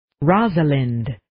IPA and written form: 'rɑzʌlɪnd (Rosalind)